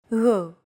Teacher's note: It's like a very soft, continuous, and loosely held G, almost as if you're gargling, but don't make it sound too throaty. Γ. There's no such sound in English, but most people would transcribe this using the letter G, because that's the closest equivalent in English.